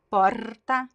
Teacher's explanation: But one interesting thing from Rio Grande do Sul, usually the R is very vibrant, and in the front